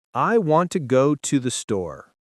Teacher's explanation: Notice how we stress want, go, and store. The small words to, and the are weak. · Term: stress-timed